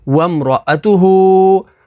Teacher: ہا کے اوپر کھڑی حرکات ہے تو اسے حروف مدہ کی طرح لمبا کر کے پڑھیں گے